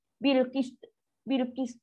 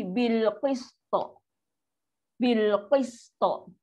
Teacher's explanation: Qaf tebal, qaf tinggi, sin rendah, to dia tinggi balik. Rendah, tinggi, rendah, tinggi.